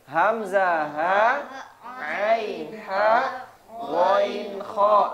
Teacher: Hamzah ha bawah, ain ha tengah, ghain kha atas.